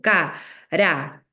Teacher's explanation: en caramelo la fuerza de voz está en me